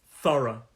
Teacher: has two syllables thorough thorough and that these two syllables and the stress is on the first syllable